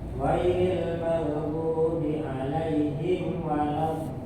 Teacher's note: makhrajnya dha ini pinggir lidah dari pangkal sampai menjelang depan, menyentuh gigi geraham yang atas. Kalau ini misalnya lidah, ini gigi, dia nyenggol di sini.